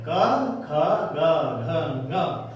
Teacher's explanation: इन सब का उच्चारण स्थान है बेटे कंठ। और इन्हें कहेंगे कंठ ध्वनि।